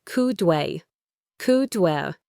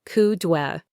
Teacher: It can sound like "coudwe," "coudwe." The D at the end of could connects to the W of we